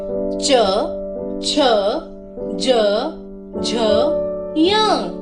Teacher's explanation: इनकी ध्वनि जिह्वा द्वारा तालु को छूने से आती है। तालु अर्थात मुख का ऊपरी हिस्सा, जिसे आप तस्वीर में भी देख सकते हैं। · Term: तालव्य ध्वनियां